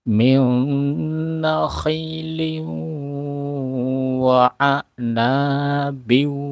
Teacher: Waja'alna fiha jannatin min nakhil, ya, min nakhilin idgham biguna, tanwin bertemu wawu, langsung masuk ke dalam huruf wawu